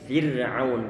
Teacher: Ra dia disukunkan, kemudian sebelumnya dia berupa harokat kasroh. Ini ra-nya tentunya dia dibaca tipis, Fir'aun, gak boleh fir, tapi Fir'aun.